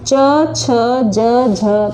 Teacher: तालू से बोला जाता है